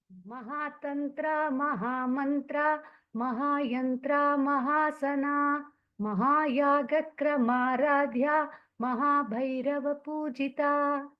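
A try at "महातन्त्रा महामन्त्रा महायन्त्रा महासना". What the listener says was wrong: See, when you chanted Mahabhairava Pujita, you told the Dirgha correctly. Mahabhairava Pujita, you told. But when you chanted other words, okay, Mahatantra, Mahamantra, so little Dirgha should be given.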